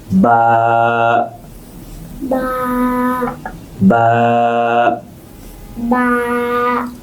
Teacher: দুই ঠোঁট চাপ দিয়ে ধরে তারপর বাতাস ছাড়তে হয়